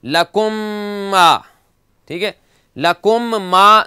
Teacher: پہلے میم کو دوسرے میم میں مرج کر کے یہاں تشدید لگا دیں گے اور غنہ کر کے پڑھیں گے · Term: ادغام شفوی